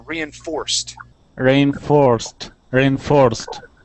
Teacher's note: so we're gonna have that accent on that o-r